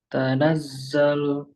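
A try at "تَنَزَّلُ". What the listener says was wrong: Ulangi, disempitkan suara dhammah. Lu.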